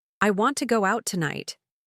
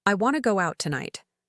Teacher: The words want to became wanna. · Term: connected speech